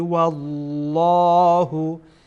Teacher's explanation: والله اینجا لام جلاله پر میشه. به این لامی که در الله هست در اینجا میگن لام جلاله، این پر میشه